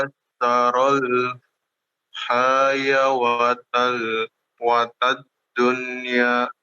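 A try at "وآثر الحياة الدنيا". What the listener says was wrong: Baik, wa atharal hayatad dunya. Waw itu yang di atas wawunya itu tidak ini ya, tidak dibaca, tapi dia sebagai alif, sebagai huruf alif untuk huruf ya-nya.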